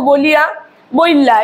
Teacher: দুটি স্বরধ্বনি মিশে গেল, মিশে গিয়ে হলো বলে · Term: অভিশ্রুতি